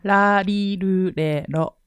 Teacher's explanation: Those are the 5 syllables in Japanese that contain the tongue flap sound.